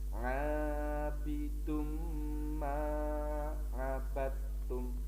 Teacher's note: karena ketemu dengan ma, maka cara membacanya n-nya hilang. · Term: idgham bi gunnah